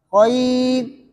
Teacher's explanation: اگر وقف کریں گے تو را باریک ہے